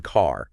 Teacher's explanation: in American English, that R sound is usually quite strong. You hear it clearly wherever it is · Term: The rotic R